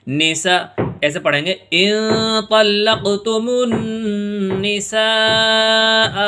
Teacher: یہاں نون کے اوپر تشدید آ گئی، اس لیے یہاں پر غنہ ہوگا۔